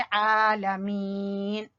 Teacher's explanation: आइन को वस्ते हलक से और लाम को छोटा पढ़ेंगे